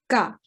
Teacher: this sharp, strong ga sound with no big puff of air